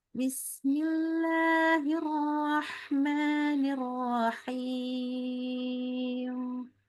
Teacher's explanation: Kan kita kalau mim atau nun tuh kita nggak naber apapun alasannya. Jadi nggak naik nadanya. Lembut. Jadi mim sama nun itu dia tidak kita kuatkan yang lain-lain. · Kalau kita him, nah naikin nada kesannya menghentak. Padahal dia harusnya lembut.